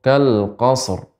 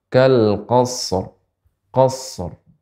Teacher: Shadnya ee dialirkan karena shad bukan huruf qalqalah